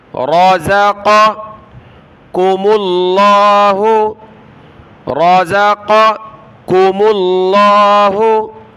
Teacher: رَزَقَ بڑی قاف ہے، اس کے بعد یہ باریک کاف ہے، اس کو پتلا پڑھنا ہے